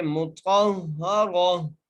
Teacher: सुहुफ़म, और मीम पर गुन्ना, मीम के ऊपर पेश है और ता के ऊपर ज़बर है, हम ता को मोटा करके पढ़ेंगे, ता को हा से मिलाएंगे और हा के ऊपर ज़बर है, रा के ऊपर ज़बर है, रा के ऊपर ज़बर आने की वजह से हम रा को मोटा करके पढ़ेंगे।